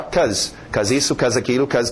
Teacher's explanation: em pronúncia rápida nós vamos ver o be sumir.